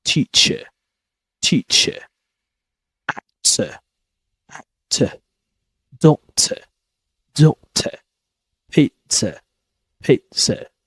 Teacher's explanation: I don't pronounce the letter R? I do replace the letter R with a sound, which is a relaxed sound. It's very relaxed sound. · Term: Schwa sound